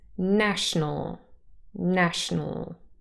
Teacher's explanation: the schwas in the last two syllables disappear